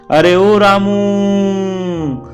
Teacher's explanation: जो प्लुत जो है वह जब किसी को दूर से जब हम पुकारते हैं ना, तो हम क्या करते हैं, वो अंतिम स्वर को हम लंबा कर देते हैं, अरे ओ रामू। तो जो रामू हमने उच्चारण किया उसमें क्या किया, उसको खींचकर हमने लंबा कर दिया